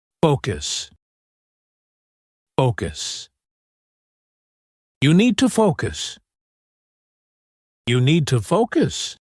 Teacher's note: The stress is on the first syllable, and the O has a long O sound.